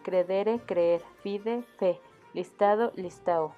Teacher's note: finalmente para España termina con la pérdida de D intermedia y D final